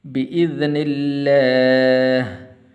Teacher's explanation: لفظ اللہ کو پر نہیں کرنا اس لیے کہ اس سے پہلے زیر ہے تو باریک کر کے پڑھنا ہے